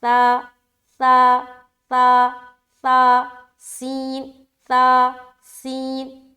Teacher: سین میں سیٹی آ رہی ہے اور تا میں سیٹی نہیں آئے گی